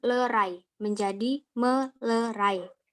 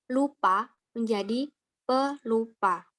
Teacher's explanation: hilangnya fonem N pada morfem men dan pen akibat yang berawalan fonem L, R, Y, dan W serta nasal